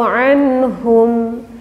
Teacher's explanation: Lafad anhum ada nun mati bertemu huruf ha. Maka cara pembacaannya adalah harus kita jelaskan. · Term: idhar halki